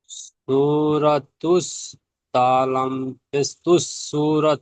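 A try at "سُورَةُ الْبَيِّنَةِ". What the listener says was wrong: তালাম পেশ তুস নয়, তালাম পেশ তুল, বাইয়িনাতি, বাই, জি, নাতি,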